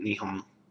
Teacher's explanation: It's not difficult to add that NG, nasal G, or nasal in sound.